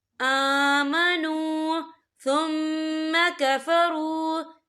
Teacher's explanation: اور آگے دیکھیں آمنو، یہاں پہ واو مدہ ہو رہا ہے، واو ساکن ہے، واو ساکن سے پہلے پیش ہے، تو ہم یہاں 2 یا 3 عدد کے برابر کھینچ کے پڑھیں گے۔